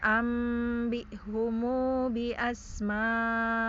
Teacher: yaitu hum jadi humu 2 harokat ya kalau wasol · yang asma'i itu kan mad wajib mutasil dibaca tawasud, yaitu 4 harokat gitu ya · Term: silah